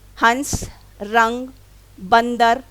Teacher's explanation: वह नासिकीय ध्वनि, नासिकीय मीन्स जो नाक से निकलती है, जो जिस वर्ण के ऊपर लिखा जाता है उसके तुरंत बाद बोला जाता है और उच्चारित करते समय हवा नाक से निकलती है और उच्चारण अधिक जोर से होता है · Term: अनुस्वार